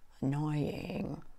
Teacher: Sometimes we end up with a scratchy sound because we're taking that last syllable so low. We call it vocal fry.